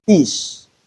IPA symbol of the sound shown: f